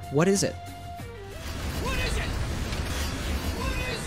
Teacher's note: all three words then link together